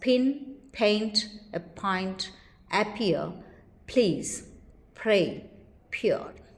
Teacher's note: P is aspirated, that is, it is released with a puff of breath when it occurs initially in stressed syllables. The symbol used to represent this allophone is p, ph.